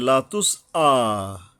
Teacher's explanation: এই যে লাতুস আ, এই এখানে একটা হামজা আসছে, সিনের পরে একটা হামজা আসছে, মানে হলকের গোড়ার থেকে শক্তভাবে আদায় হবে। লাতুস আ, মানে যত সম্ভব আমরা পারি, কিন্তু আইন না হয়ে যায় আবার।